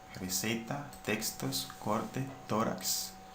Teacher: Vemos que siempre aquí en estas palabras el mayor esfuerzo de entonación recae sobre la penúltima sílaba. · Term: palabras graves o llanas